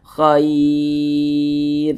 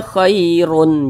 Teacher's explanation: Kita baca khair. Jangan dibaca khairun, jangan. Huruf ro kita sukunkan.